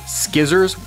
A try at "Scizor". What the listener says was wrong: Yes, a pair of skizors. Skizor, not skizzer. Skizor. skizors. you're pronouncing the tool.